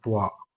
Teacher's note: ത്വാ എന്ന അക്ഷരത്തിന്റെ മഹ്റജ് നാവിന്റെ തലയും മുൻപല്ലിന്റെ മേലെ ഭാഗത്തിന്റെ ഊൻ ഭാഗവുമാണ്